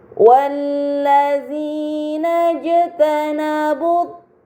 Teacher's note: Pada kata wallazina jtanabu terdapat huruf jim sukun, ini dinamakan qalqalah, maka harus dibaca secara memantul.